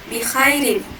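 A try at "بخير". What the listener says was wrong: Mulahadzah, ada satu catatan bikho ya, bukan bikha. Tebalkan kho ya, bikho, kho. Bukan bikho, bukan bikha, tapi bikho. Ya, tebal dia.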